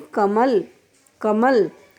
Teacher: का और ला पे जोड़ नहीं लग रहा, किस पर लग रहा है, माँ पर, कमल। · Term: बलाघात